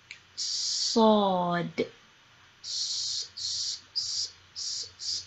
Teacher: I'm lifting my tongue, it sounds kind of like a whistle.